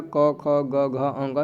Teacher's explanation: क ख ग घ अंग सबका कंठ से होता है